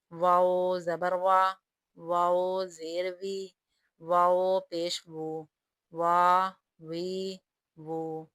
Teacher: گول کریں گے لیکن ہونٹ آپس میں ملیں گے نہیں۔